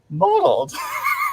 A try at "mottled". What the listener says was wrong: You're saying modeled though. mottled.